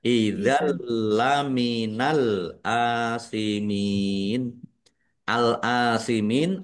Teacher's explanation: tanwinnya tidak dibaca tetapi tidak mendengung. Idzal kalau tidak mendengung berarti tidak ditahan. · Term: idgham bila ghunah